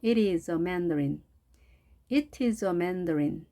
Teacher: t가 양쪽에 모음이 있으면 r 발음이 됩니다.